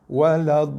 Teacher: Contoh, dalam contoh ni yang selalu kita baca dalam surah Fatihah yang kita baca hari-hari dalam solat, waladha, kita panjang waladhalin. Tekan lam, lepas 2 step. Tapi kena panjangkan dulu 6 harakat. Cukupkan 6, baru tekan dan juga lepas. Sebab bacaan ataupun kaedah membaca huruf bersabdu, kita perlu tekan dan lepas sekiranya huruf sabdu tersebut adalah bukan huruf nun dan mim.